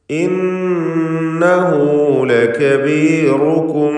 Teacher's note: ഇന്നഹു നൂൻ മുഷദ്ദദയെ മണിക്കണം.